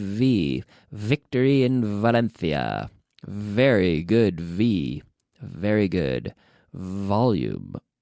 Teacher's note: V vibrating my lips volume vibrating activating the vocal chords okay the V is like a vocalized F · the V is essentially an F with the vocal chords activated so we start with the F we add the vocal chords